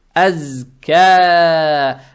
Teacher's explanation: Далее стоит буква каф, она мягкая с фатхой. Фатха приобретает оттенок я. И эту же фатху тянем в два шота за счет подсказки, за счет алифа максуры и за счет прямой палочки.